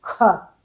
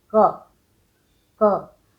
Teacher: ख में हवा निकालनी है, क में हवा नहीं निकालनी है।